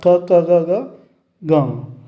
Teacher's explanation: अब देखते हैं कावर्ग में अर्थात क क ग घ ग आ और विसर्ग का उच्चारण स्थान जो होगा वो कंठ होगा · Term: कंठ्य ध्वनि